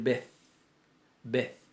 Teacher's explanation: la tau final de la palabra bet, de la letra bet, no tiene dagesh. Entonces al no tener dagesh es fricativa. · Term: forma fricativa